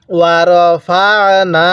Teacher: আর নুনের মধ্যে এক আলিফ টান দিব, জবরের পরে খালি আলিফ থাকলে এক আলিফ টানতে হয় এই কারণে।